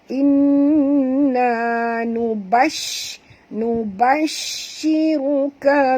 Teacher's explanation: Okay, dekat shim ada tasydid, maka kita kena baca tekan ataupun juk dekat shim dan bunyikan tafashi pada huruf shim ni, iaitu bunyi angin yang kuat berhamburan